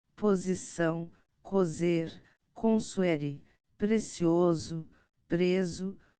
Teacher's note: as sílabas em que a sibilante é branda dental ou, segundo o dialecto, supra-alveolar